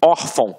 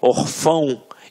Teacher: reparem que a sílaba tônica está na penúltima sílaba. Por isso é uma paroxítona.